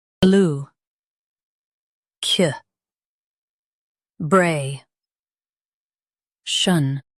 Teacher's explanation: Emphasize Bray and keep Lu light.